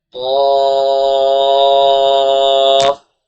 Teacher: قاف الف زبر قا، الف سے پہلے زبر ہے، الف مدہ، قاف حروف مصالحہ میں سے اس کو موٹا پڑھیں گے، الف کو بھی موٹا پڑھیں گے، اور فا کے اوپر جزم لگی ہوئی ہے، حروف مدہ کے بعد سکون اصلی جزم آ رہی ہے، مد لازم کا قاعدہ لگ رہا ہے، تین الف کے برابر کھینچیں گے اور قاف کو اور موٹا کر کے پڑھیں گے